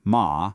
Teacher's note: And the fourth tone, ma, is a short sharp drop like you're saying stop.